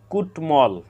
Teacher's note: ট এর সাথে ম ফালা যুক্ত হওয়ার কারণে ম ফলার উচ্চারণ অবিকৃত রয়েছে